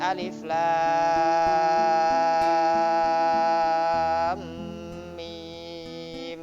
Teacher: Seperti alif lam mim, itu panjangnya 3 alif. Itu namanya mat lazim mutawal harfi musaqqal.